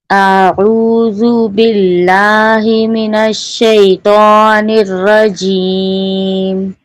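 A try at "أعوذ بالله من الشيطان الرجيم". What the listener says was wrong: ये तो हर्फ तो को होंठ से नहीं अदा करेंगे, होंठ वाला 4 हर्फ है, फा बा वाव मीम, उसको जी जी, इसको जुबान की जड़ से अदा करें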